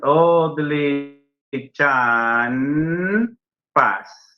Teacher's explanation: Ahí tenemos N, P. Pero esa N se transforma en M.